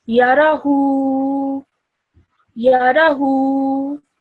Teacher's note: So you're pronouncing this hu for 2 seconds because it has an inverted dhamma.